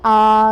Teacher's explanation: तो आ को जब हम बोलते हैं तो आप देखते हैं आ तो पूरा मुख खुल जाता है, तो ये कहलाता है विवृत स्वर।